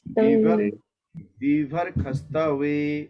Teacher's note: जो आपको आधा सौ दिख रहा है ना, मूर्धन्य स, उसको जो है ख पढ़ा जाता है वेद में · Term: वैदिक उच्चारण